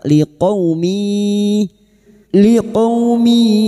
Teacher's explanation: tanwin bertemu ya idgam ghunah masuk dengan mendengung masuk pada huruf ya dan mendengung selama tiga harakat